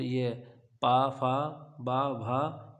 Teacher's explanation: पा फ बा भा यह आपकी ओट हो जाएंगी